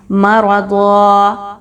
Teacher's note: ہم نے اس 2 زبر کی تنوین کو جو الف کے ساتھ موجود ہے ہم نے اس کو الف مدہ میں بدل دینا ہے۔